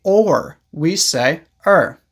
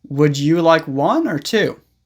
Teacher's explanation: Most of the time, in natural speech, we don't say or, we say er.